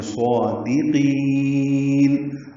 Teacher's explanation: صادقین میں صاد پر ہے، موٹا پڑھیں گے، 2 حرکات لمبا کریں گے. دال باریک پڑھیں گے، قاف پھر موٹا پڑھیں گے